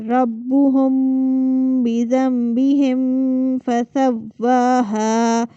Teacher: اب یہ ایک ہی آیت کے اندر آپ کو دو چیزیں مل رہی ہیں کہ میم کے بعد با آ رہی ہے تو اس میم پر غنہ ہو رہا ہے اور دوسری میم کے بعد فا آ رہی ہے تو فا چونکہ حروف غنہ میں سے نہیں ہے تو وہاں پر غنہ نہیں ہوگا